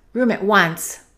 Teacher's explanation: Let's connect room and at, and let's hold the T.